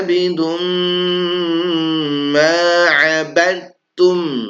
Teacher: Nah ini ghunah ya. Idgham bighunah. Abidum langsung m. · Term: idgham bi gunnah